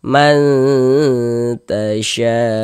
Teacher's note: Jadi bagian manya itu suaranya itu kita tahan ya. Kita panjangkan sebentar ya. Sepanjang dua harakat kita ghunahkan. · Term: ikhfa hakiki